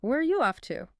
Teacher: the falling intonation shows it's asking for information